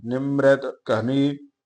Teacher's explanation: ਮਮੇ ਦੇ ਪੈਰ ਚ ਰਾਰਾ ਹੈ ਇਸ ਕਰਕੇ ਅੱਧਾ ਉਚਾਰਨ ਕਰੀਦਾ